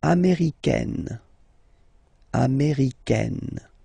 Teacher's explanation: it's really open, this A-I, américaine